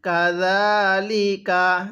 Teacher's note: জালটা নরম করে এক আলিফ টান দিব